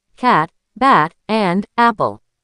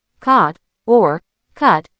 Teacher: Practicing that wide, flat, a, by dropping your jaw just a little more than you think you need to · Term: flat, a, sounds